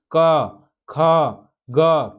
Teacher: जो हमारा हवा निकल रहा है वो कंठ से होकर निकल रहा है यानी इसमें कंठ का प्रयोग हो रहा है तो के वर्ग